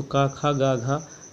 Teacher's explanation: घा का उच्चारण स्थान क्या है, कंठ है